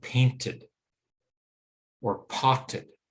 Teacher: And because T and D are those related sounds, the voiced and the unvoiced version, the same thing happens if we try to add an ED ending to a word that ends with T. We can't hear the T and the D together. We need a vowel sound between them.